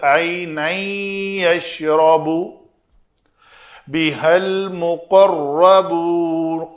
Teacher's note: تنوین عینن، اس کے بعد یا آ گئی ہے تو ادغام ہوگا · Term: ادغام ناقص